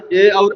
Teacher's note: ए और ऐ का उच्चारण स्थान कंठ तालु है